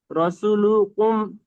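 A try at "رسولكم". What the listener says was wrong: রসুলু রসুলাকুম লুকুম নাই লাকুম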